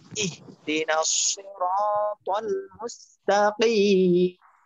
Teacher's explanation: নাসি মোটা হবে র মোটা হবে ত মোটা হবে